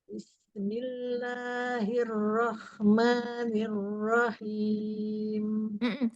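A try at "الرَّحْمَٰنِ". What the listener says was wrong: Hanya masih terdengar masuk ke kho.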